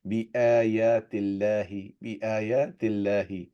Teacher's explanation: Then kasra is before the word Allah. That means it would not be a thicker sound, plain sound.